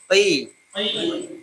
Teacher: pertahankan untuk tidak ada nafas keluar ya